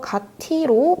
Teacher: 이 현상은 의문의 축약이 아니고 국의 음화예요. 국의 음화가 뭐냐면 디귿과 티읕이 모음 이를 만나서 지읒과 치읒으로 소리 나는 현상이에요